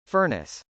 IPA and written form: fˈɝnəs (furnace)